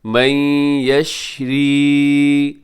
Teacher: نون ساکن کے بعد یا ہے تو ادغام یرملون غنے کے ساتھ